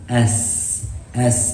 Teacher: the like the front teeth s s and it's low you the tongue is is is not close to the roof of the mouth so there's a lot of space in the mouth and that's why uh the sound is light · Then the sin with a sukoon. So the sin is a letter that comes from the tip of the tongue, right near the front teeth. S, and it's low. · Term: scene